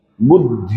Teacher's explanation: द जो है वो ध के साथ छुपा हुआ बोलना है हमको